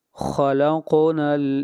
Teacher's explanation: خا کو موٹا پڑھیں گے اور قاف کے اوپر قلقلہ ہوگا